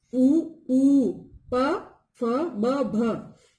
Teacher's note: ओष्ठ्य, जिनका उच्चारण दोनों होठों की सहायता से होता है।